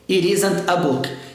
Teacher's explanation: Esse T não vai ter som de R, porque ele não está entre vogais. O que está antes dele é uma consoante.